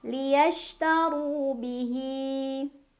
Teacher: Liyashtaru. Ru mad tabi'i. Karena ada waw sukun sebelumnya dhammah. Cara bacanya dipanjangkan 2 harokat.